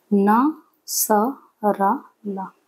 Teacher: तीन ध्वनियों के उच्चारण में जिह्वा की नोक दंत पंक्तियों के ऊपर के भाग को स्पर्श करती है